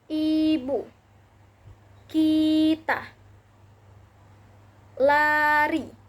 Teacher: I, tinggi atas depan dengan mulut tertutup, menghasilkan kata ibu, kita, lari. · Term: vokal I